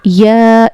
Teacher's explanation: इसको हमें कम से कम 2 से 4 अलिफ के बराबर खींच कर पढ़ना होता है। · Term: मद मुनफसिल